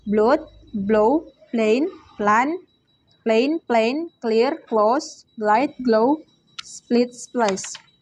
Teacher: voice alveolar lateral sound L